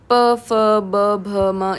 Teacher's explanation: इसमें तो आपके लिप्स टच हो रहे हैं। है ना? तो बट एयर जो है वो रुक करके फिर झटके के साथ निकल रही है। तो ये आपका जो है वो स्पर्श व्यंजन है।